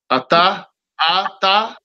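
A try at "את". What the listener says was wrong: No, the Shiva is silent. So you would say at. At. Or without vowels, you would say off.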